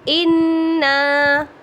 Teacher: ان پہ بھی میں نے غنہ کیا اور نا کو بھی میں نے 2 کاؤنٹ کھینچا، اس لیے کہ یہ الف مدہ ہے